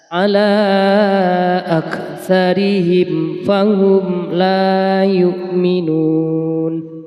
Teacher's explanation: ada mim sukun ya bertemu dengan huruf Fa maka harus dibaca izhar syafawi bacanya harus jelas